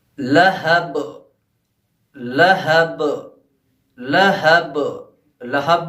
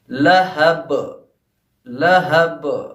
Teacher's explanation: لہب میں جو با ہے وہ آخر میں آیا ہے، تو اس لیے با پہ جو قلقلہ ہوگا وہ زیادہ ہوگا، یعنی ٹکراؤ جو ہوگا ہمارا زیادہ ہوگا. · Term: قلقلہ کبریٰ